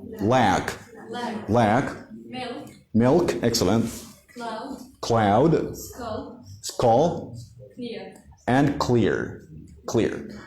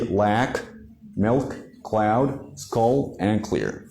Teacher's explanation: in american accent we don't have something called the light l we have only the dark l